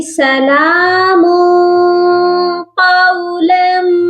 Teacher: میم پر ہم اخفا کریں گے، کیونکہ آگے قاف ہے جو کہ حروف اخفا میں ہے، تو ہم اس کو پڑھیں گے سلام قولم، ٹھیک ہو گیا؟